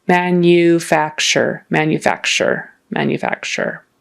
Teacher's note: that u in the middle um has a y in front of it